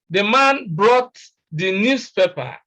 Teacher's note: Now, the stress is on brought. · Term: emphatic stress